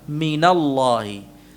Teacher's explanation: Ya, dari mengharakatkan nun sukunnya. Jadi nun yang awalnya min sukun diharakatkan menjadi mina, minallahi. · Min yang asalnya sukun nunnya diharakatkan menjadi mina. Ya. Ini karena nun sukun ini bertemu dengan lam sukun ini.